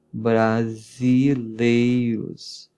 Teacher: Olha o S com som de Z, porque ele está entre duas vogais.